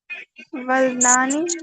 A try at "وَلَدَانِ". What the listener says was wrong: نہیں، ولدانی نہیں ہوگا نا، وہ والدانی ہی ہوگا. لام کے اوپر زبر ہی آئے گی.